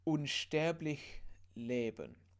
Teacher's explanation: Yeah, really soft lich. It's not a ch, it's a h. It's very similar to an h, really.